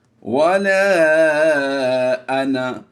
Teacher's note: لفظ انا کو ہم کھینچ کر نہیں پڑھتے، انا نہیں پڑھنا بلکہ انا، یعنی اس سے الف کو ہم نے نہیں پڑھنا، اس الف کی وجہ سے نون کو لمبا نہیں کریں گے۔